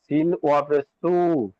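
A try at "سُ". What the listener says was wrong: তিন ওয়াও কোথাতে আসছে?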